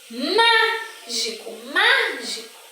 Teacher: má é a sílaba que eu pronuncio com mais intensidade. Quando a sílaba da palavra ela é a antepenúltima sílaba, eu classifico em proparoxítona, tá?